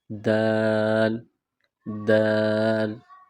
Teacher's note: زبان کا سرہ اوپر کے دانتوں کے مسوڑوں سے ٹچ کریں گے، آواز نکالیں گے